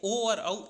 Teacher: ओ और औ इन दोनों का कंठ और ओष्ठ ये दोनों ही उच्चारण स्थान होते हैं